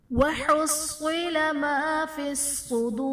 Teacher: ما فی الصدور میں صاد بھی حرف مستعلیہ ہے، پر پڑھا جائے گا، واو ساکن سے پہلے پیش ہے، واو مدہ کا قاعدہ ہے، اور وقف کی صورت میں را ساکن ہو جائے گا تو یہاں پر بھی مد عارض کا قاعدہ ہوگا، اور یہاں پر ہم را کو پر پڑھیں گے · وَحُصِّلَ میں صاد حرف مستعلیہ ہے، پر پڑھا جائے گا